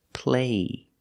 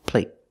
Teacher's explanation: vowel shorter they're the same vowel they're the long a but the stop T at the end makes the long a a little shorter